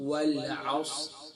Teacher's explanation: صاد کو سین نہیں پڑھنا، عین کو حمزہ نہیں پڑھنا